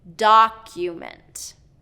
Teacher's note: So you'll usually see a little dash mark next to the stressed syllable. So in document, it's first syllable stress